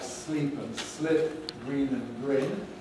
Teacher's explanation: Which is fine, as long as you put the length marks there, and as long as you understand that the difference is not just one of length, or even maybe one of length, but of quality